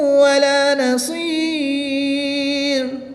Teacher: یہاں پر تنوین کے بعد حرف معلوم میں سے واو ہے تو یہاں پر بھی ادغام مع الغنہ ہوگا، اور وقف کی حالت میں یہاں پر مد عارض ہوگی. 2 سے 3 الف تک کھینچ کر پڑھیں گے.